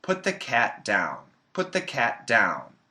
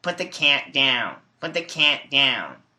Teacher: that's a very nasally sound, and it's not typical, and I recommend that you don't imitate that sound.